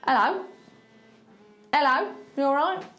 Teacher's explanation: See, I'm not saying these H's.